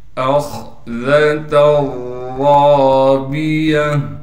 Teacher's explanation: حمزہ کو خا سے ملائیں گے، اس لیے کہ خا ساکن ہے اور خا کو موٹا کر کے پڑھیں گے، ذال کو باریک کر کے پڑھا جائے گا۔ · تا پر دو تنوین ہونے کی وجہ سے پھر ہم تا کو را کے ساتھ ادغام کر دیں گے اور تنوین کو ختم کر دیں گے، را کو موٹا کر کے پڑھا جائے گا، اس لیے کہ را پر زبر ہے اور را کے بعد الف ہونے کی وجہ سے را کو ایک الف کی مقدار کھینچیں گے، گول تا وقف کی حالت میں ہا بن جائے گی۔